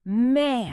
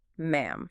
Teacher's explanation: ends with an m. Your tongue drops and your lips must press together tightly.